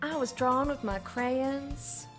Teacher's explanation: you're saying crayon but it's two syllables because you're southern